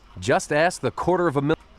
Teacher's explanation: It's the next word that he's saying there is beginning with a vowel sound, so he's almost running the sentence. It sounds like quarter of, like it's all one word and it's a fast word.